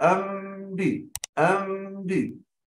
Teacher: انطباق الشفتين يكون بالملامسة ولا يكون بالضغط